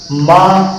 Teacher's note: माँ का उच्चारण स्थान भी दो जगह से है, एक है नासिका और दूसरा है ओष्ठ।